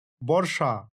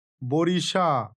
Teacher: এই বর্ষা উদাহরণটি লক্ষ্য করুন, এর থেকে তৈরি হয়েছে বরিশা। এখানে র ও স অর্থাৎ মূর্ধন্য স, এর মাঝে হস্রই এসেছে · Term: স্বরভক্তি